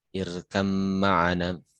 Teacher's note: Nah, tidak irkab ma'ana tapi irkam ma'ana. Ba sama mim makhrajnya sama di bibir ya. Sama makhrajnya tapi beda sifat. Nah, diidghamkan. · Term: mutajanisan